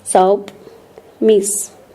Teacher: So the s sound is voiceless.